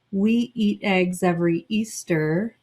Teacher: even though there's a lot of breaks i'm trying to connect that last sound to the next sound